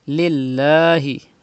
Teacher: pronounce lam with thin voice because there is zir before the lam of Allah's name